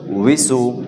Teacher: দুই ঠোঁট গোল করে উইসু